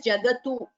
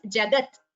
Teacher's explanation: I have heard certain chantings where it's the U is heard, but like I've said this before, Jagat, it is a halanta, that is, it is a vyanjanam at the end of a pada, and there is no U or there is no swara there. It is Jagat.